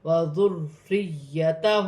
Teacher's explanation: را کے نیچے زیر کی حرکت ہے، را باریک پڑھی جائے گی اور مشدد ہے، جماؤں کے ساتھ ادا کیا جائے گا. یا بھی مشدد ہے، اسے بھی جماؤں کے ساتھ ادا کیا جائے گا.